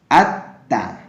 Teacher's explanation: Contohnya ya atta tadi harusnya dibaca alta, tapi lam sukunnya tidak dibaca, melainkan dibaca huruf setelahnya. Atta, seolah-olah lamnya hilang dan masuk ke huruf ta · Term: idgham